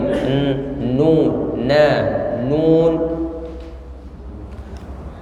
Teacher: huruf nun menempel dengan gusi dekat gigi